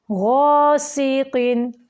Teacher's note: गैन जो है यहाँ पे पुर है, पुर हरूफ के ऊपर ज़बर हो और उसके आगे अलिफ हो वो ज़्यादा पुर हो जाता है